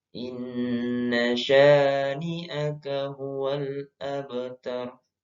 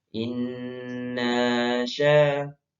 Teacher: antara na langsung masuk ke sya. Tidak boleh berhenti. Kalau berhenti nanya jadi panjang.